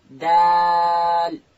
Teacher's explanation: دال ادا کیږي د ژبې سر به د لوړې زامې د مخ ته دوه غاښو و بیخو ته ورلو